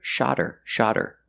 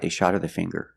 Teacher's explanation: if I link the words then H is silent then you hear shodder shodder the T changes to a fast D